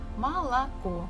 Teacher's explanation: the stress falls at the last syllable, so the first two O's we must read or say as A.